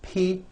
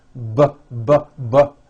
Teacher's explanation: say the P sound and the B sound are paired consonants they are produced exactly the same way here in your mouth but the P sound has no voicing · voicing but but you see that everything here stays the same the only difference is my vocal chords are either vibrating or they're not vibrating